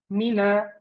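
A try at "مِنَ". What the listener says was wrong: This one's getting a little bit heavy again. The first one was better.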